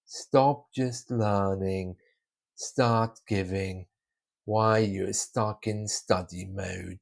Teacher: I'm still pulling my intonation down when really I want to put it up.